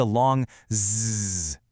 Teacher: It's literally just the vibration of your vocal cords. And you can feel it. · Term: voicing